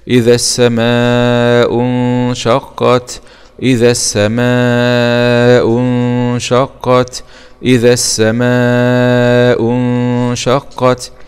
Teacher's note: نون سكون مع الإخفاء الحقيقي